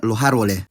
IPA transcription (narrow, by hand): loh͜ ˈaɾβole